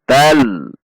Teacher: Di depannya ada huruf lam, maka fathah tanwin masuk ke huruf lam, ditandai dengan tasydid, dibaca masuk tidak dengan dengung atau idgham bila gunnah. Berarti lam tasydid tidak dibaca dengan dengung, tidak dibaca dengan panjang.